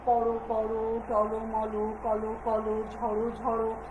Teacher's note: শেষের যে অধ্বনিটা আছে বা মাঝখানে যে অধ্বনিটা আছে সেটা কি হয়ে যাবে, ও হয়ে যাবে